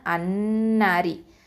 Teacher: லாமை இங்கே உச்சரிக்க மாட்டோம். ஓகேவா, அப்போ லாமை உச்சரிக்காமல் அன்னாரி, இந்த ஹம்சத்துல் வசலுக்கு நம்ம ஃபத்தாவை போட்டு தான் உச்சரிப்போம்.